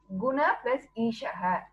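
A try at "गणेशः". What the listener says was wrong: Not Guna, it is Gana.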